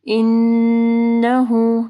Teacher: نون مشدد ہے، ٹھیک ہے، ہاں کے اوپر پیش ہے، پھر مد صلہ صغرا ہے تو 2 حرکات کے برابر لمبا کریں گے